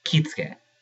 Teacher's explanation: There we have our elided U between S and before K. · U, when it comes between certain consonants, disappears or gets devoiced or elided. And commonly it's after S before K.